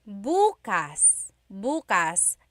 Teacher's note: emphasis is on the first syllable that means tomorrow